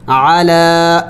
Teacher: یا کو نہیں پڑھا جائے گا، کڑی زبر لام کے اوپر ہے